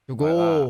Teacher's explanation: When we non-Northern Midwesterners try to say the sound O, it's sort of O, whereas they do it as a ooh.